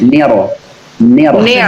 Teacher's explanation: Ketika tebal, maka ujung lidah hanya memantul.